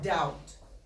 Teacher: you write it with the B but you don't hear it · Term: silent letters